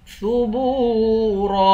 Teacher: ثبورا، با کو واو کے ساتھ ملا کر واو کو بھی ایک الف کی مقدار کھینچیں گے۔ آخر میں را ہے، اس را کو موٹا پڑھیں گے۔